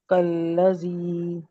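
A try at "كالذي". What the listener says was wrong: کاف باریک پڑا جائے گا. کالذی، زی ذال کا مخرج درست نہیں ہے، زی سکین نہیں ادا ہوگا.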